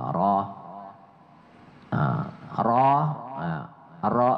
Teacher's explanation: menurut kaidah ilmu tajwid ee ro itu menggetarkan ujung lidah ya Keti a kita membaca ro tuh menggetarkan ujung lidah dan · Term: takrir